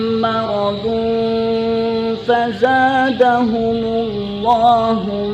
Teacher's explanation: tanwin bertemu dengan fa, hukumnya ikhfa, sehingga kita tahan juga 2 harakat